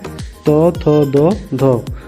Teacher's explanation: ऊपर के दांतों के निकट इसमें आते हैं त, थ, द, ध